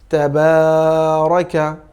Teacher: তাহলে দেখুন তা, র এবং কা এই তিনটি স্বাভাবিক উচ্চারণ হবে, অর্থাৎ তা জবর তা, র জবর র, কাফ জবর কা। কিন্তু মাঝখানে বাটা খাড়া জবরের কারণে একটু দীর্ঘ করে পড়তে হবে